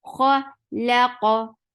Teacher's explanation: Lam is very short and attached with qaf. Qaf will get sifa of qalqala, and qaf is heavy.